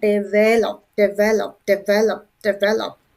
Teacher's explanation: the stress on the second syllable. Second syllable.